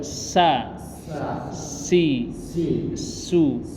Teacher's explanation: Ada suara desis di situ. Nah, itu dia namanya hamas.